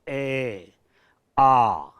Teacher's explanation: उच्चारण स्थान के आधार पर हम ए और आ को कंठ स्वर कहते हैं। ए आ का हम उच्चारण करेंगे तो निश्चित है कि प्राणवायु कंठ से आकर के टकराएगी।